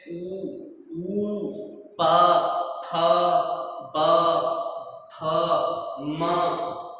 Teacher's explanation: उच्चारण करने में हमारे होंठ जो हैं अपने आप बंद हो रहे हैं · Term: ओष्ठ